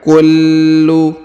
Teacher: kullu huruf lam ditahan dan ditekan